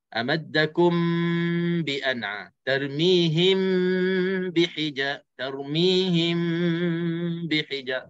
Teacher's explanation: Kalau ikhfa syafawi, kita sembunyikan bunyi mim mati itu ke dalam huruf ba. Dan cara sembunyikan menjadi pilihan kita, itulah kita tutup rapat terus mulut. Bibir mulut kita tutup rapat terus.